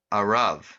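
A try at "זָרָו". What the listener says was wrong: Well, the z comes first. Zaro. Zaro. The vav sound of the V doesn't come when you've got the dot on top of it, unless, which is kind of unusual, but unless there's another vowel underneath it.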